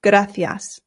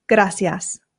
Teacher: That's because I live in Spain and here in Spain they pronounce the C's with a th sound